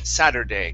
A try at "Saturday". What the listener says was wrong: Give me a good flap T sound instead of sadur, sadder, Saturday.